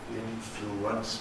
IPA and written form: ˈɪnfluəns (influence)